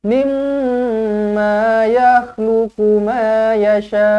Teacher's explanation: Mim sabdu wajibul gunnah, dengungkan dua harakat.